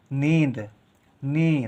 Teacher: ना के साथ इ का उच्चारण हो रहा है। नी लेकिन देर तक हो रहा है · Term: बड़ी ई की मात्रा